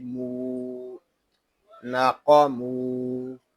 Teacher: میم کو ہم ایک الف تک کھینچ کر پڑھیں گے کیونکہ یہاں واو مدہ ہو رہا ہے۔ واو مدہ اس لیے ہو رہا ہے کہ واو ساکن سے پہلے پیش آ گیا ہے۔